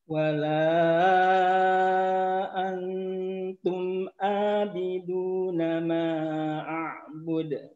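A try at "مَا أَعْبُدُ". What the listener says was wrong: Oke, pada kata ma'a'bud. Ma'a'bud. A-nya jelaskan dulu. Ma'a'bud.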